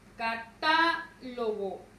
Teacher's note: Vean, la mayor fuerza de voz recae en ta.